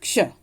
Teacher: क्ष में क और श और अ, इन तीनों की ध्वनि आ रही है क्ष बोलते समय। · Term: संयुक्त व्यंजन